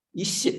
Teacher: That is half sh and then cha. Full cha.